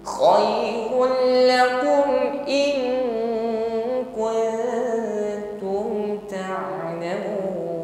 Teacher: in itu dengungnya lebih nampak daripada kuntum. Ya, ini bedanya ikhfa adna dengan ikhfa a'la.